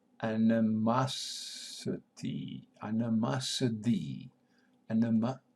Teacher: We have accent on third syllable. Masity, again schwa here, animosity.